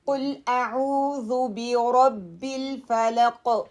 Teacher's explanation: قاف back of my ٹانگ اوپر جائے گی · عین کے لیے middle part of my throat